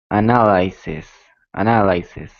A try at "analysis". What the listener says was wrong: I think you pronounce it okay, but the last syllable is actually not the stressed syllable, because if it were, it would sound like analysis, analysis. But it doesn't sound like that. It sounds like analysis, analysis. So which is the stressed syllable? Analysis.